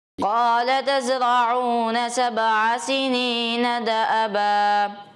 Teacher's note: عین کو واضح نہیں پڑھا، ایسا لگا عین مشابہ حمزہ کے ہو گیا